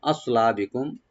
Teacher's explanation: সোয়াটাকে একটু আমরা ডিপ করে পড়বো, রাইট দিয়ে আস, লা সিন যেন না হয় , লা ওপেন থাকবে, আর বিকুম মিম সাকিন এখানে জাহার করবো